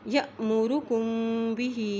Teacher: اب یہاں دیکھیں یہاں پہ الف کے اوپر جزم ہے تو یہاں پر بھی جھٹکا دے کے پڑھیں گے۔ یأمرکم بہ، ہا کے نیچے کھڑی زیر بھی ہے، اوپر مد بھی ہے، اس لیے اس کو لمبا کریں گے